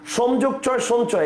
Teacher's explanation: ম এর পর যেকোনো বর্গীয় ধ্বনি থাকলে ম ধ্বনিটি সেই বর্গের নাসিক্য ধ্বনি হয়